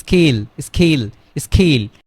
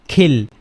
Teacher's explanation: সো এইটা হচ্ছে যখন এস আসবে সামনে তখন এটা অ্যাসপিরেটিভ সাউন্ডস হবে না। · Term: নন অ্যাসপিরেটিভ